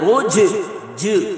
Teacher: جیم ساکن پر قلقلہ کریں گے، یعنی آواز کو لوٹائیں گے